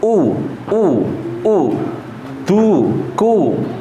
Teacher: kalau U dia intimam syafatain, yaitu bibirnya monyong dulu